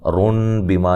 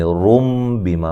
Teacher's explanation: اقلاب نون کو میم سے بدل کے پڑھیں گے. نون تنوین کے اندر جو نون ہے، نون کی آواز پیدا ہوتی ہے، اس نون کو میم سے بدل دیں گے. رن بیما نہیں کہیں گے، رم بیما پڑھیں گے.